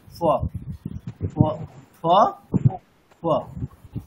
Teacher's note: স্পর্শ করা তাই তো কিন্তু অর্ধেক ফকারের উচ্চারণ মানে কিরকম হবে দুটো ওষ্ঠ পুরোপুরি মানে স্পর্শ করবে না মানে কাছাকাছি আসবে কিন্তু পুরোপুরি স্পর্শ করবে না